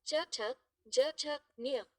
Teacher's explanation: तालव्य palatal ध्वनियां जो तालु से उच्चारित होती हैं